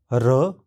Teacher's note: इस ध्वनि के उच्चारण में जीभ मुड़कर मुंह की तालू के पास आती है। जीभ का सिरा दांतों को पिछले स्थिति उभार के पास रहता है।